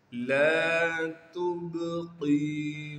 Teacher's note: وَمَا أَدْرَاكَ مَا سَقَرُ لَا تُبْقِي، لام کے بعد الف مدہ ہونے کی وجہ سے لام کو ایک الف کے مقدار کھینچیں گے، تا کو باریک کر کے پڑھیں گے اور تا کو آگے با ساکن سے ملا دیں گے، با پر قلقلہ کیا جائے گا یعنی آواز کو ہلائیں گے